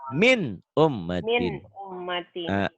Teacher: Karena nun mati ketemu alif, maka bunyi nun matinya harus dibaca jelas.